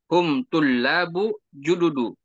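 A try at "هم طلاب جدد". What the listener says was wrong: Bertanwin. Hum tulabun jududun. Jududun.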